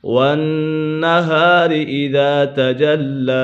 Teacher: نون مشدد ہے، نون مشدد میں ہمیشہ غنہ ہوتا ہے، اس کے بعد الف مدہ ہے، الف سے پہلے اگر زبر ہو تو الف مدہ ہوگا۔